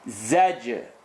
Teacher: Za, top and bottom teeth together. Jim is going to bounce.